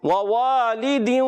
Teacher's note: پہلا واو حرکت والا ہے، دوسرا حروف مدہ والا، اس کو بغیر کھینچے ادا کریں گے، اس کو ایک الف کھینچیں گے اور دونوں کی ادائیگی ہونٹوں کی گولائی سے